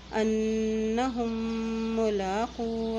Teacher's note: لام کے اوپر کھڑی زبر ہے اس لیے ایک حرکت پڑھیں گے۔